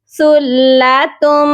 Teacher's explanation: تا کو جب ہم میم کے ساتھ ملائیں گے تو غنہ بھی کریں گے کیونکہ میم مشدد پر ہمیشہ غنہ کیا جاتا ہے